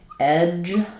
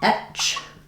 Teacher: Um looking at a difference between a word like edge with the voiced J sound and etch with the voiceless ch sound